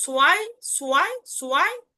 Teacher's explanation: একটু ভ থাকলেও ভটাকে আমরা পূর্ণাঙ্গ ভাবে উচ্চারণ করব না, যার কারণে আপনি সোয়াইটাই উচ্চারণ করবেন, সোয়াই।